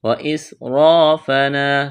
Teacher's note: یہاں الف مدہ ہے، واسرافنا سین میں سیٹی کی آواز پیدا کریں گے ، سین کو باریک کرنا ہے، را کے اوپر زبر ہے، · سیٹی کی آواز پیدا کریں گے، سین کو باریک کرنا ہے، را کے اوپر زبر ہے، را کو موٹا کریں گے ، الف مدہ ہے، الف سے پہلے زبر ہے، فنا واسرافنا